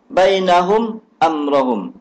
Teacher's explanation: Mim mati temu dengan hamzah. Tak dengung.